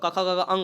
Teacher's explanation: कवर्ग में जो होता है ये कंठ से उच्चारण होता है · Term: कंठ ध्वनियाँ